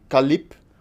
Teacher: At the end of a word in Turkish, every consonant is always voiceless. You never vibrate your vocal cords.